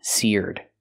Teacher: use the ear sound like beer and near sear plus the D sound